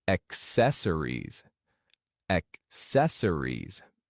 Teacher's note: Focus on emphasizing the second syllable.